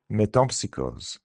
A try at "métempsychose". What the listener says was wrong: Exactement. And with that Z sound at the end.